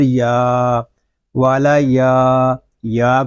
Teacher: یا کو ایک الف تک کھینچ کر پڑھیں گے کیونکہ یہاں پہ یا مدہ ہو رہا ہے۔ یا مدہ اس لیے ہو رہا ہے کہ یا ساکن الف سے پہلے زبر آ گیا ہے۔